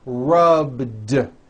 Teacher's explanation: All I did was add a voiced D sound at the end. Rubbed. It's not rubbed with an unvoiced T.